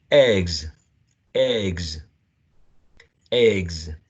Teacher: word that ends in a voiced consonant would be voiced so we have a voiced consonant sound and a voiced plural marker · The plural form of this word that ends in a voiced consonant would be a voiced z.